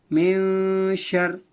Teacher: شین را زبر شر، میو شر. نون ساکن کے بعد 15 حروف اخفا میں سے شین آنے کی وجہ سے اخفا ہو رہا ہے. نون کی آواز کو ناک میں چھپا کر پڑھیں گے. اخفا کی مقدار ایک الف ہوتی ہے.